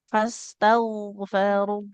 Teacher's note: Jadi gain itu harus mengalir suaranya